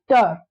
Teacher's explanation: ट जो है वो मूर्धन्य है, दंत्य नहीं है